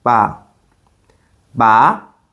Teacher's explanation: The second tone rises like you're asking a question.